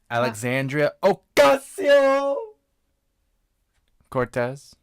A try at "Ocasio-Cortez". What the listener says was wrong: You didn't roll your R. it's Cortez. Cortez.